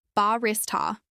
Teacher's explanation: This is pronounced with stress on the second syllable,